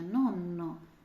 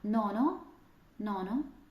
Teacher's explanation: нонно дідусь дві енни а ноно ноно чуєте одна н це дев'ятий тому обов'язково подвоєння намагаємося дати відчути проговорити його ось